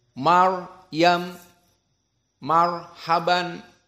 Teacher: Ra mufahhamah. Karena ra as-sakinah qablahu fathah. Maryam, marhaban, semuanya dalam keadaan ra mufahhamah.